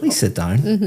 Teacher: my intonation is going up